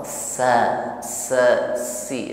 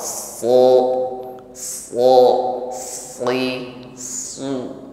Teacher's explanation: ini menjadi lebih tebal SH sehingga memang berat diucapkan dibandingkan ketika mengucapkan Sin yang lidahnya tetap di bawah